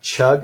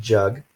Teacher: in chug our vocal cords are not vibrating and then jug they are vibrating otherwise those two sounds are made the same way so the